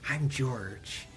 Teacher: When we think of nerds, we think of very like some nasally sound, but his voice is very breathy. It's very at the front of his voice